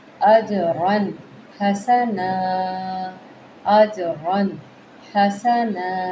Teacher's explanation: آگے ہا ہے تو یہاں پہ ہم نے حروف حلقی کی وجہ سے تنوین کا اظہار کرنا